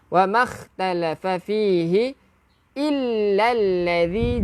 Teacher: jaga zal, hujung lidah keluarkan sikit.